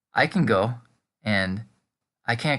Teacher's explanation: native speakers almost never say the T on the end